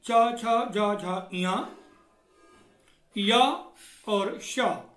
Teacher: इन वर्णों का उच्चारण तालु से होता है। तालु अर्थात दांत के ठीक पीछे का हिस्सा